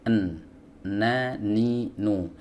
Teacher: Ya, huruf nun sebagaimana kita tahu adalah huruf yang keluar dari ujung lidah, ya, bertemu dengan gusi